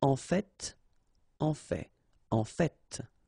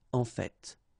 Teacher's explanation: So whether you pronounce the final T or not, you can hear both.